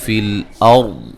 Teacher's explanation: را کو موٹا ادا کریں گے اور ضاد کو بھی موٹا ادا کریں گے